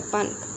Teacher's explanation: La pronunciación final de N es la velar NG, es parte importante del español americano.